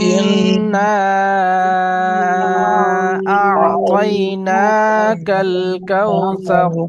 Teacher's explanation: ইন্না মাদ্দে মুনফাসিল, একটু বেশি টানতে হয়, 2 থেকে 3 আলিফ